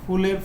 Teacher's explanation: ফুলের ফ হচ্ছে অঘোষ মহাপ্রাণ